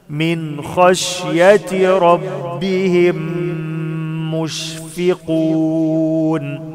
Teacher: ميم ساكنة بعدها ميم متحركة، إدغام بغنة